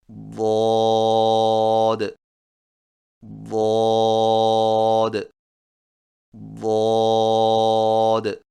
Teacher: زبان کے موٹے کنارے کو اوپر والی داڑھوں کی جڑ پر آہستہ آہستہ نرمی سے لگا کر خوب موٹی اور دراز آواز میں پڑھیں